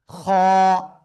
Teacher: আমরা শিখেছি গলার মধ্যখান থেকে গলা চেপে উচ্চারণ করতে হয় আর এটা হলো গলার শেষ ভাগ থেকে মোটা আওয়াজে আমরা উচ্চারণ করব ঠিক আছে আর এটা উচ্চারণ হবে কেমন খ এক আলিফ টান